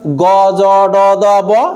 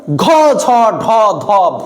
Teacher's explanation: যেগুলো আপনার কথা বলতে গেলে মুখ দিয়ে বাতাস বেশি বের হচ্ছে ওইগুলোকে বলা হবে মহাপ্রাণ